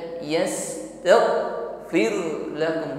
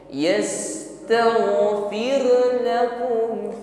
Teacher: Ghain sukun ya, sifatnya rakhawah, jarayan as-saut 'inda al-mururihi fil makhraj. Maka alirkan bunyi huruf ghain, jangan tertahan. Bukan yastaghfir lakum, bukan tertahan ya.